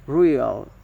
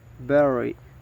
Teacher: the voicing is voiced, and the place of articulation is post alveolar